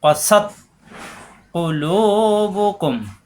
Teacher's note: কা হবে না, জিব্বার গোড়া থেকে ক্বাসাত কুলুবুকুম